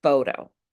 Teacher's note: The first syllable is the strongest syllable. The letter T is between two vowels. The T turns into a very light D.